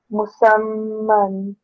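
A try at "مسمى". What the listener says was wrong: Okay, don't rush it. Okay, there's a mim sound. It needs to be extended and made for about 2 seconds. Don't do it for less than 2 seconds. Okay, musamman.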